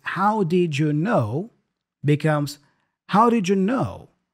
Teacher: the first did is kind of a flap d as well just like the flap T